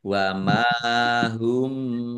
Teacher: Dibaca panjang dua harakat. Mim sukun bertemu dengan huruf ba. Ba bacaan ikhfa syafawi dibaca samar-samar.